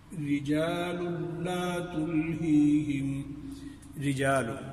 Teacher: را کے نیچے زیر آ جانے کی صورت میں را کو باریک کر کے پڑھیں گے